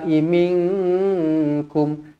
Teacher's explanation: Nun kosong bertemu dengan kaf, ikhfa hakiki dengung dua harokat.